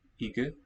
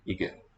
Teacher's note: what's written as a double voiceless sounds to me like a simple voiced.